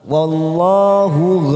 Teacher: wallah lam jalalah maka kita baca tafkhim